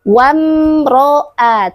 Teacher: Jangan lupa r-nya dibaca tebal, Teman-teman. Karena ketika ro berbaris fathah maka hukum bacaannya adalah tafkhim yaitu tebal.